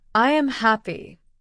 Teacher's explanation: When I say I am happy, the sound goes down at the end.